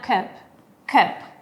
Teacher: En British pronuncio la A normalmente, cup, pero en American English existe una característica que es el uso de la schwa, que es una vocal neutra, que no suena ni como A ni como E. Entonces la palabra que en británico suena cup, en American suena cup, cup.